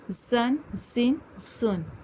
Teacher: یہ حروف صفیریہ بھی ہیں، سیٹی بھی ظاہر کرنی ہے